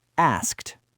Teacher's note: the word asked ends in three unvoiced consonants in a row. S, K, T.